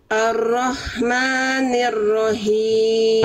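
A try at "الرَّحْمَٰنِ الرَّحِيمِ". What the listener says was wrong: Oke PR bunda di H kasro ya masih Hi masih H besar harusnya him berbisik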